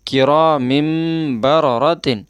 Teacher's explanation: تنوین ہے تو اس کو بھی میم سے بدل دیں گے